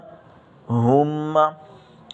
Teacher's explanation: اس ہا کو سینے سے نکالنا ہے اور اس ہا کو گلے سے نکالنا ہے۔